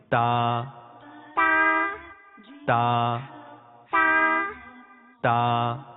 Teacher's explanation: تا کی ادائیگی کا طریقہ یہ ہے کہ زبان کی نوک اور اوپر کے دانتوں کی جڑ سے تا ادا ہوتا ہے